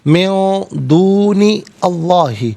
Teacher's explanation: نون ساکن ہے، اس کے بعد دال حرف اخفا ہے، تو نون ساکن کو اخفا کے ساتھ پڑھا جائے گا، یعنی ناک میں آواز لے جا کر گنگنانا